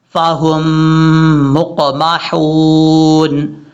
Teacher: میم کو قاف سے ملاتے ہوئے قاف میں قلقلے سے بچنا ہے